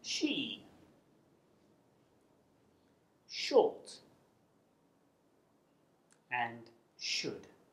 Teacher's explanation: you create friction through clinched teeth by directing air flow through a narrow channel formed along the middle of the tongue the sh sound is made through the mouth and it's unvoiced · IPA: /ʃ/